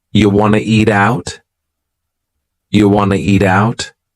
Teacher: We've dropped the question word completely, do. Just yeah. And then we have reduced want to become wanna.